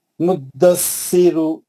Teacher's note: आखिरी में जो पेश है उसको नहीं खींचना। मुद्दस्सिरु रू बोले तो अल्लाह दो हरकत कर दे।